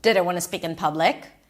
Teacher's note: That's a yes, no question. Rising, rising intonation.